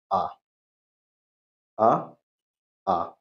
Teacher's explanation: मध्य स्वर सिर्फ एक है और वो है आ